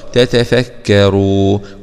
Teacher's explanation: راء ضمة رو مع تفخيم الراء